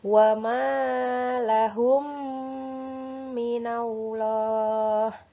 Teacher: Nah, itu dinamakan idgham mimi atau mutamasilain. Nah, cara membaca idgham mimi yaitu dengan cara menyuarakan mim rangkap atau ditasdidkan. Jadi kalau mimnya double itu seperti mim tasdid ya.